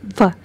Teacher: When you say F, your lower lip is touching your upper teeth, and you see air pressure is built up and it is partially blocked.